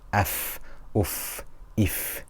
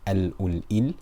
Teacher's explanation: you can really tell the breath continues, and you should let the breath continue for a short while, purely because this is the intrinsic characteristic of the hams